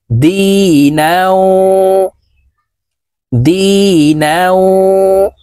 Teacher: দাল ইয়া জির দি, নুন ওয়াও দুই জবর নাও। এই নুন ওয়ার সাথে গুন্নাহ করতে হবে।